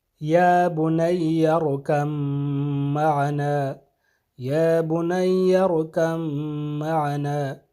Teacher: ارکب میں جو با ہے یہ ادغام ہو جائے گا معنا کے میم میں، تو یہاں پہ با کی آواز نہیں آئے گی بلکہ میم کی آواز آئے گی